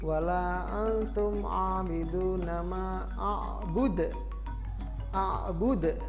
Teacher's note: Di situ ada huruf dal yang mati di akhir kalimat, maka cara membacanya adalah dipantulkan,